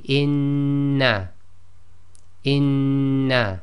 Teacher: when we double up the sound just like we did in English we read this as the two noon sounds as one